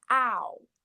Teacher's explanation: the vowel sound that we hear at the beginning, it's not h, so it's not a consonant sound, it's a vowel sound